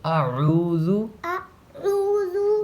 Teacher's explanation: دال کو کھینچیں گے نہیں، دال پہ پیش ہے